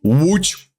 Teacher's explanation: And the Polish L makes a W sound.